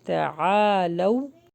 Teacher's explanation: لو حرف لین ہے، جلدی پڑھیں گے